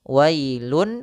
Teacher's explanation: dengan ya yang di mana datang setelah tanwin itu huruf ya Maka langsung saja suara nun-nya dimasukkan ke huruf ya wailun awalnya kita ganti dengan kita masukkan ke rongga hidung kita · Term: Idgham Bighunnah